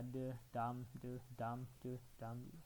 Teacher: Sehingga dia memiliki pola de, dam, de, dam. Ada weak, strong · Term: rhythm